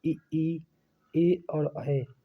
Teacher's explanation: जिन वर्णों के उच्चारण में जीभ का अग्रभाग कार्यरत होता है उन्हें अग्रस्वर कहते हैं।